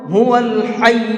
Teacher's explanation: واو کو لام میں ملا کر کے پڑھیں گے، ہوول۔ اس کو پڑھنے میں لوگ غلط یہ کرتے ہیں، ہوا ال پڑھتے ہیں، ہوا الحی، تو یہ غلط ہے۔